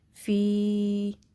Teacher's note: اس میں فا کے نیچے کسرہ ہے, آگے یا مدہ ہے, یا ساکن ما قبل کسرہ ہو تو اس کو 2 کاؤنٹس اسٹریچ کریں گے